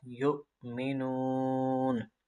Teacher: لا یؤمنون، الف مدہ، حمزہ ساکنہ جھٹکا کے ساتھ، یؤمنون، اور یہاں پر واو مدہ اور مد عارض۔